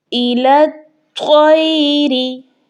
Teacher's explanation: اور اس طا پر چونکہ تشدید بھی آ چکی ہے تو ہم نے اس کو سختی کے ساتھ اور موٹا پڑھنا ہے